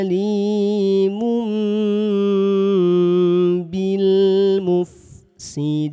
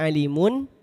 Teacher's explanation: Yang dibaca M adalah tanwin ketika jumpa dengan huruf ba. Jangan sampai dibacanya N.